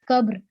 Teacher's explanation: رے جو ہے وہ آدھا رہ گیا، آدھی آواز ہے، چھوٹی آواز ہے، ساکت ہے